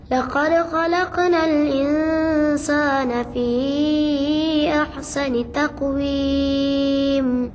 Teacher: Pertama, perkataan insan, iaitu nun mati bertemu dengan sin. Hukumnya ikhfa, dibunyikan dengan dengung, kadarnya satu alif bersamaan dua harkat.